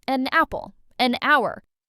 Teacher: Even though hour starts with H, it sounds like ow, a vowel sound.